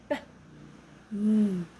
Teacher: Both lips touch or come close together. This in both upper and lower lip. · This in both upper and lower lip. You press your lips together and release the air. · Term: labial